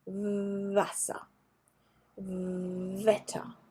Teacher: German W, is pronounced like in English V. So you put your teeth on your lip